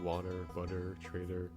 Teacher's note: T can also make a D sound in words like water, butter, trader, usually when followed by an R sound